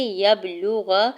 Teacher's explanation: یا کے زبر کو با ساکن کے ساتھ ملاتے ہوئے قلقلہ کرنا ہے، لام کی پیش کو جلدی سے ادا کریں گے، غین کے زبر کو لام ساکن کے ساتھ ملاتے ہوئے پڑھیں گے۔